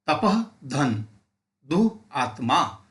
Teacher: असे काही शब्द असतात विसर्गाचे ते उच्चार करत असताना आपल्याला जोरात श्वास सोड सोडावे लागतात